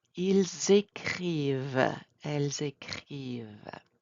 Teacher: Are we pronouncing the ENT? No.